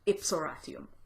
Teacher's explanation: So you might have, if you had a vowel plus M at the end of one word, and then H plus a vowel at the beginning of the next word, like, for instance, ipsum Horatium, that's pronounced ipsoratium. So the UM disappears and the H disappears